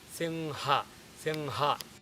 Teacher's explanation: just when you are about to say ga, you drop ga, instead you say ha.